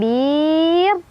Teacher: ro-nya dibaca secara tipis